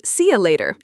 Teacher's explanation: See you later is often reduced to see you later in casual conversation. And in American English, the T sound often becomes a D sound, so it sounds like see a ladder.